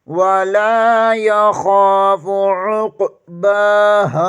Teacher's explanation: बा के ऊपर खड़ी ज़बर है, इसे एक अलिफ के बराबर खींच कर पढ़ेंगे। हा ज़बर के आगे अलिफ मद्दा है, इसे भी एक अलिफ के बराबर खींच कर पढ़ेंगे।